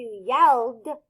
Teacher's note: So if I'm going to turn yell into yelled, because l is voiced, it's going to say d.